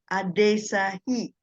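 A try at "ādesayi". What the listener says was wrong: See, there's a H here. Adesai. Don't bring H, huh? Only Y. It's Y, no H. Y.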